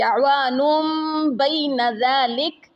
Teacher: تنوین کے بعد جب با آ جائے تو وہاں اس تنوین کو میم میں بدل دیتے ہیں, تو اس کو اقلاب بولتے ہیں.